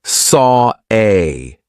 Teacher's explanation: The reason why we're doing an R here is because we have the or sound of saw and then an A. We have another open vowel sound. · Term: intrusive R